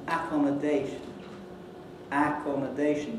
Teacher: putting the secondary stress on the first syllable